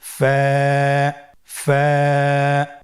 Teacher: ফা, স্ক্রিনে দেখতে পাচ্ছেন ফায়ের মাখরাজ। ফায়ের মাখরাজ হলো নিচের ঠোঁটের প্যাড সামনের উপরের দুই দাঁতের আগার সঙ্গে লাগিয়ে উচ্চারিত হয়। · ফা হরফটি উচ্চারণের ক্ষেত্রে বারিক হবে এবং এক আলিফ টেনে পড়তে হবে।